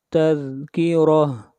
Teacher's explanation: را کو موٹا پڑھیں گے اور آخر میں گول تا ہے، جب اس کے اوپر سٹاپ کریں گے تو یہ تا ہا بن جائے گی